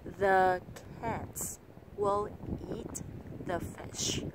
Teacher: Nếu các bạn nghĩ rằng là câu này nói trong 6 nhịp vỗ tay thì các bạn đã nhầm. Người bản xứ chỉ nói câu này vẫn chỉ trong khoảng 3 nhịp vỗ tay thôi, và người ta vẫn nhấn vào ba từ quan trọng nhất